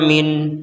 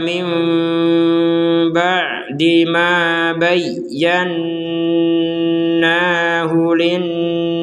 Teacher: nun sukun digabungkan dengan ba, maka nun sukunnya yang barusan dibaca jelas sekarang berganti dengan huruf mim, sehingga terbacanya mim, bukan min lagi, bukan min tapi mim.